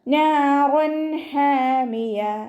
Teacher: ഹൻ്റെ മഖ്റജ് വസത്തുൽ ഹൽക്ക്, തൊണ്ടയുടെ മധ്യഭാഗം.